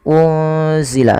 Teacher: menyamarkan nunnya kepada huruf zai yaitu bacaan ikhfa hakiki